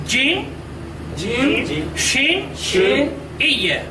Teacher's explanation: তারপরে আসছে এই অক্ষরটা উচ্চারিত হয় জিহ্বার মাঝখান থেকে, জিহ্বার মাঝখান সে বরাবর উপরের তালুর সাথে লাগায়া এই তিনটি অক্ষর উচ্চারিত হয়